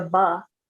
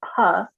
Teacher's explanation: when you make a ba the tissue doesn't move but when you make a puff the air pushes the tissue